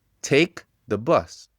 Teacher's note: Take, c'était le syllabe fort. The boss, j'ai dit plus doucement.